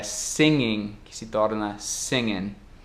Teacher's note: a tendência de perder o G no fim dos verbos dos gerúndios, às vezes na língua inglesa falada, informal